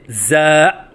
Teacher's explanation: بعض بچے الف کے بعد حمزہ کا اضافہ کرتے ہیں، یہ غلط ہے، جیسے زا۔ بعض بچے زا کے الف کی ادائیگی کے وقت آواز میں لہراؤ سا پیدا کرتے ہیں، یہ غلط ہے، جیسے زا۔